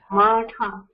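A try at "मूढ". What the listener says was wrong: Moodha. Not ma. Moo. Like the cow moo. Moodha.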